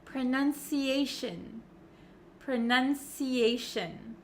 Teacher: we actually pronounce it as shin shin so you can see my mouth is not opening like an o sound